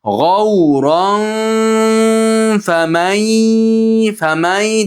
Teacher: G'avron famay deb nun yad ichiga kirib ketadi. · rod ustidagi tanvin fod ichiga yashirinadi